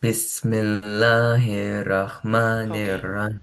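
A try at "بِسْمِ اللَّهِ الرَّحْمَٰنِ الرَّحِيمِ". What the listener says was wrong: Herah, herah, or hirrah. We need to connect this ha properly with this ra.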